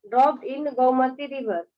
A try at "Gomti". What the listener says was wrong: Gomti. गोमती मतलब M के बाद ये थोड़ी लिखा हुआ GOMTI गोमती.